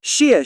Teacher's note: has two falling tones though the second one is lighter